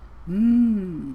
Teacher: we close the lips it's a nasal sound so the sound is gonna come through your nose but your lips are closed